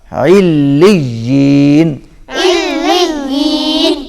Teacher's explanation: لام باریک ہوگا، لام موٹا نہیں ہوگا